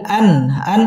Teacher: ইজহার গুন্না ছাড়া স্পষ্ট করে পড়তে হবে